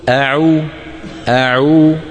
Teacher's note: الهمزه من اقصى الحلق ا العين من وسط الحلق